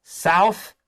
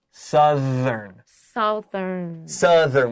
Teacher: so ow becomes uh